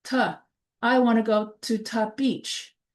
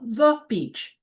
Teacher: cannot say the or the. It comes out sounding ta. I want to go to ta beach.